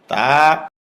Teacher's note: জিহ্বার গা উপরের দাঁতের গোড়ার ভিতর দিয়ে লাগবে মুখ খুলে দিবে